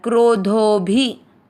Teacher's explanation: आपको धो की मात्रा को लंबा खींचते हुए छोटी मात्रा वाला भी बोलना है